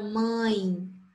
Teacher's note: quando o ditongo é nasal, eu sinto que parte da minha voz, ela vai sair pelo nariz. Eu vou sentir, se eu colocar a mão aqui, eu vou sentir ele tremer.